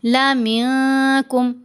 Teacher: نون ساکن کے بعد کاف ہے، نون پر اخفا ہوگا